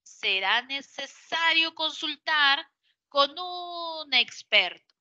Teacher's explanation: en este caso va a ser una inflexión de voz final descendente